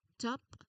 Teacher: You start with a tongue tip seal and you release it sharply for the T consonant